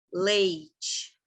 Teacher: vocês percebem que o e leite ele é mais forte que o i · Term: ditongo